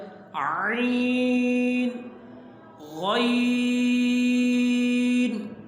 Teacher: ناک میں آواز نہ جائے بلکہ آواز منہ میں رہے، تب یہ صحیح پڑھے جائیں گے۔